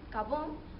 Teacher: en algunas palabras como carbón, la R lo omiten y solo dicen cabón